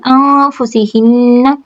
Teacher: یہاں پر جو مد ہو رہی مد منفصل، انفسہن، نون ساکن کے بعد فا اخفا حقیقی